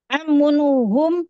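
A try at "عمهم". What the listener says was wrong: Jangan gunakan tanwin. Bagus, amuhum. Amuhum, ya. Ya, ada tasdid, tanduinya hilang.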